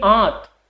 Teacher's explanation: आप ऐसे अपना नाक बंद कीजिए, नाक बंद करके आप बोलिए आंत, तो उस आ के साथ में नाक से एक साउंड निकल रहा है, एक ध्वनि निकल रही है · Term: अनुनासिक ध्वनि